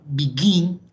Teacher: la palabra begin, que lleva el acento en la última sílaba, que termina en consonante, vocal, consonante, en ese caso doblamos la última consonante.